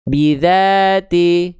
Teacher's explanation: Jelaskan vokal i-nya. Jangan miring-miring ke vokal e. Bidzati. Jangan ti ti ti t ti angkat tengah lidahnya.